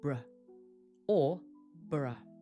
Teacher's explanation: if you see burough at the end of a place name, it's very weak. It's unstressed and it sounds like br or bur.